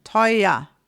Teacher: So at the end, you have an E and R. But we don't even say this R at all with an R sound. It is an A.